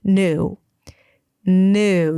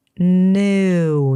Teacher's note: use more contemporary American pronunciation, new. New. You drop the y sound, new. So it's just an N and then oo, and make sure you round your lips and pretend like there is an extra W at the end.